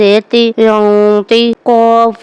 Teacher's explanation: نون ساکن کے بعد ط ہے یہں پر جو ہے اخفا ہوگا یعنی جو غن کی اواز ہے اس کو ہم اپنے ناک میں چھپا کر پڑھیں گے